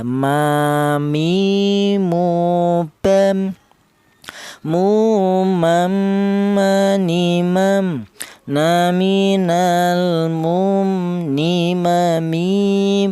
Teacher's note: Kemudian huruf mim ini keluarnya huruf berasal dari kedua bibir yang rapat ya.